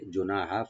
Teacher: হাটাকে right দিবেন গলার মাঝখান থেকে